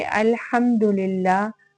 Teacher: میم ساکن ہے، نہ تو حرف با ہے نہ ہی حرف میم ہے بلکہ دال ہے، تو ہم اس کو فوراً سے ادا کر دیں گے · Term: اظہار شفوی